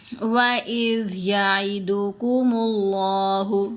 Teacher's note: ذال کی آواز نرم آوازوں میں سے ہے. آپ کی زبان دانتوں کے درمیان میں رہے گی.